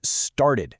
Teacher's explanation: Because the verb start ends with the t sound, it triggers our very first rule. We have to add that extra syllable.